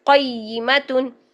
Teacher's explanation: زیادہ ٹائم نہیں لگانا، بلکہ قاف کو فوراً یا کے ساتھ ملائیں